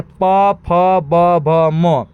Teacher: दोनों होठ के हेल्प से ओष्ठ के हेल्प से जो वर्ण निकलता है वह है प वर्ग।